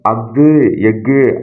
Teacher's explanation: அஃது, எஃகு ஆகிய சொற்களில் ஆயுத எழுத்து தனக்குரிய அரை மாத்திரை அளவில் முழுமையாக ஒலிக்கிறது